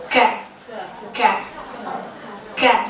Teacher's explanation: Pangkal lidah menyentuh langit-langit belakang. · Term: kaf